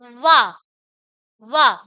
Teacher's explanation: का उच्चारण स्थान होता है देखो वा वा बोल के देखो हम ओठ का भी प्रयोग कर रहे हैं और दंत का भी